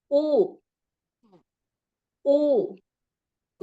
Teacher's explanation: jadi ketika kita mengucapkan huruf u kita rasa bibir kita berkerut ya berkerut